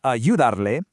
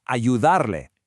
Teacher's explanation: The emphasis, the stress, it's on that second to last syllable.